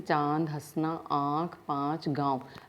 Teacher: जो ये चंद्र बिंदु होता है इसे अनुनासिक कहते हैं। इसको बोलते हुए नाक और मुंह से दोनों से इसकी ध्वनि निकलती है